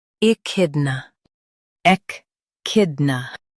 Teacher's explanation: Stress kid and keep n light.